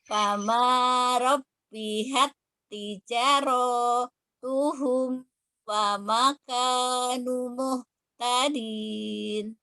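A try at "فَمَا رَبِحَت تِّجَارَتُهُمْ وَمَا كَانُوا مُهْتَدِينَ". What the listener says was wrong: Ini untuk robihat, baknya tidak ada tasdid ya. Baknya tidak ada tasdid. Sebetulnya jangan jangan ditekan, jangan robihat. Nah, robihat tijaratuhum.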